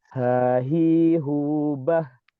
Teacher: Sehingga kita saat mengucapkan huruf H, baik ketika diucapkan dengan sukun, ih, gitu kan, maupun diucapkan dengan berharokat ha, hi, hu, itu sama sekali tidak ada penahanan suara atau tidak ada suara yang tertahan, dikarenakan H ini ya secara sifat tertahan dan tidaknya suara, dia memiliki sifat rokhawah, yakni mengalirnya suara.